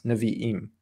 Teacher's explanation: you're correct with the Aleph being a pronounced glottal stop sound, so it's Nevi'im.